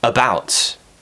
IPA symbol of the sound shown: ə